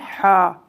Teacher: یہ حلق کے درمیان والے حصے سے ادا ہوتا ہے